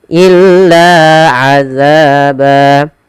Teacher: La dan za sama seperti zu dan ku, mad tabi'i, panjangnya 2 harokat, tidak boleh dibedakan. · Ba ada mad iwad. Panjangnya adalah untuk mad iwad sendiri adalah 2 harokat.